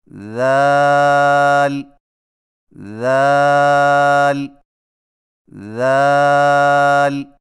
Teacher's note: ذال کی ادائیگی میں زبان کی نوک کو ثنایا علیہ کے اندرونی کناروں سے نرمی سے لگا کر باریک آواز میں پڑھیں